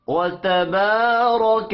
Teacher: با الف مدہ ہے، ایک الف کے برابر اس کو کھینچ کر پڑھیں گے